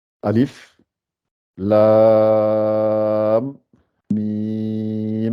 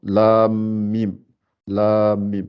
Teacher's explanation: À cause des deux mimes, c'est comme si c'est un idgham. Il y a un idgham entre les deux. Donc, il y a un entrelacement.